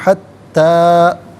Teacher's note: مد منفصل ہے تو منیمم اس کو 3 سے 4 حرکات کی مقدار کھینچ کر پڑھنا چاہیے